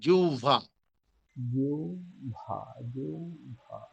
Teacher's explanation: জিহ্বা মানে জিউভা। হালকা, ভটা হালকা ঠোঁটে লাগবে, দুই ঠোঁট হালকা লাগবে, বেশি একেবারে ফাঁকাও থাকবে না, আবার একেবারে বেশি চাপ দিয়েও লাগবে না।